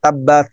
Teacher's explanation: Nah, ta itu ada nafas yang keluar.